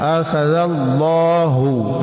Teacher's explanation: Jadi bacaannya di ujung lidah benar-benar tidak tersentuh gigi ketika dibaca akhaza, lembut ya. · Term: Dza